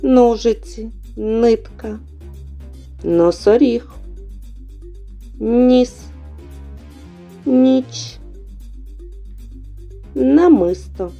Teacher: щоб вимовити звук на кінчик язика впирається верхні зуби бокові кінці язика притискаються до кутніх зубів струмінь повітря розриває зімкнення між язиком і зубами повітря зустрічає перешкоди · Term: звуки н і ні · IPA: [н, н']